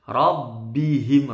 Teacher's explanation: Rabbihim, roknya tebal. Bihim ini nggak boleh dengung juga.